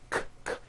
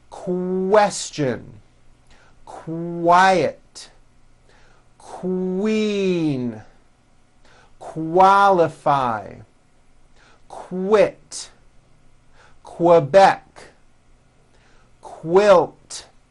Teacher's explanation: Q sounds are made with the K sound, k, k, and the W sound, w, put together.